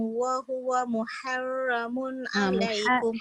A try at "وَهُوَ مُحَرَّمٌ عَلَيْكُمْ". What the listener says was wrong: Ha tu nipis betul. Ra tak boleh nipis. Wa huwa muharramun.